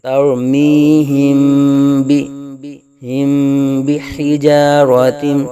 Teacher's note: حرف با آنے کی وجہ سے یہاں اخفاء شفوی ہوگا، یعنی میم ساکن میں غنہ کر کے پڑھیں گے